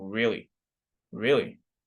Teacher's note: Or if I say really, if I say it in a monotone, really, without any intonation, without any rising intonation, it indicates impatience or annoyance. Maybe I'm annoyed, I'm impatient, I'm saying really, really.